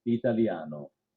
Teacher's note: that so you can hear it italiano that sound is where the air is basically sneaking out the back sides of your tongue while your tongue is being held in that l position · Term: gli sound